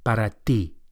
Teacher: the Spanish T is also softer than English and produced with the flat of the tongue against the gum ridge